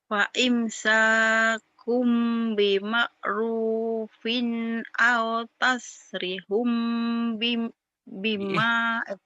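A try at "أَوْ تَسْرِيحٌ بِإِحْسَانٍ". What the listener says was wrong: Bi ihsan. Bukan bima, ini bi Ini mimnya bukan. Au di sini pendek.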